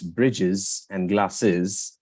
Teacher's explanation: of the final fricative for example in words Bridges and glasses the s in the final position in Native varieties is typically voiced it becomes a z or a z sound